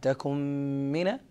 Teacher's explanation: نون ساكنة قبل حرف الميم تدغم فيها إدغاما تاما مع غنة